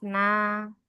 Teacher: Masuk ke pangkal lidah paling dalam qo depan sedikit ka tengah lidah jaayya kemudian tepi lidah pertama kena giraham atas d tepi lidah bagian depan ya la. Kemudian ujung lidah kena ujung langit-langit atas